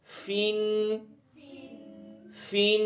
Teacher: फ़ा दो ज़ेर फिन, फिन में सांस नहीं आ रही बाहर, फिन नहीं, फिन फिन।